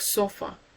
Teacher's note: the schwa sound in words like sofa. It's a mid-central vowel sound.